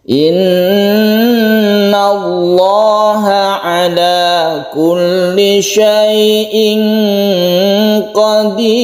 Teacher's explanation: Ada guna musyaddadah, kemudian lam jalalahnya ini adalah dibaca tarkhim atau tebal atau mufakham